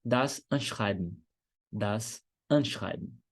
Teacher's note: no finalzinho com EN, você pode fazer som de engolindo